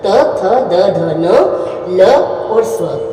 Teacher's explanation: इसके बाद देखिए तू तवर्ग, त थ द ध न ल और स्व, और इनका उच्चारण स्थान क्या है, दंत। अब देखिए, इनको बोलते समय आपकी जो जीभ है दांतों का स्पर्श करेगी, इसलिए इन्हें दंते वर्ण कहा जाता है, क्योंकि इनका जो उच्चारण है बिना दंतों की सहायता से नहीं हो सकता।